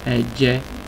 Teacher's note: Cuidado no subir mucho el tono porque vamos a un tono medio, no un tono alto.